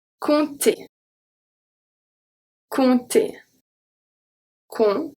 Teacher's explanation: when we have M, P, T, and then we are not going to pronounce the P.